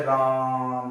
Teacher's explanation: आ को हम क्या कर रहे हैं, बहुत लंबा खींच दे रहे हैं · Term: प्लुत स्वर